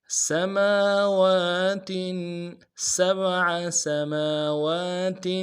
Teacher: سبع سماوات سین کی سیٹی باریک ہوگی، میم کے اوپر کھڑا زبر ہے، ایک الف دال میں کھینچیں گے، واو کے اوپر کھڑا زبر ہے، اس کو بھی ایک الف دال میں کھینچیں گے، تاکہ نیچے تنوین غنہ کریں گے.